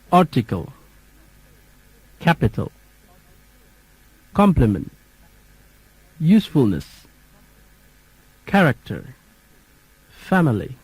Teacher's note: three syllabic words first syllable stressed